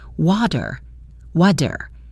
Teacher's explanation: The word water in American English has a strong flap T in the middle, so it sounds like water, water.